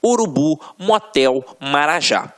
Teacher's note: oxítonas a última sílaba é a tônica